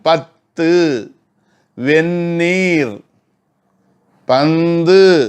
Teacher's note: மேல் வரிசை பல்லினுடைய அடிப்பகுதி இருக்கு பாருங்க. அதில் நாக்கின் நுனி, நா முடி, நாக்கினுடைய நுனியானது உர சென்று பொருந்த பிறக்கும்